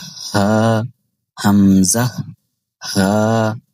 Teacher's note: মাখরাজ দেখে যান। এক নাম্বার মাখরাজ হলকের শুরু হইতে হামজাহা অর্থাৎ এই দুইটা হরফ হলকের একেবারেই শুরু থেকে উচ্চারণ করতে হবে।